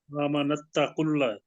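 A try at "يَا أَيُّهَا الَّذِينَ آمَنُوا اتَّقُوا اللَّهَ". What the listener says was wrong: نہیں نا نہیں ہے نا جی، پیش ہے اوپر، نون کے اوپر پیش ہے.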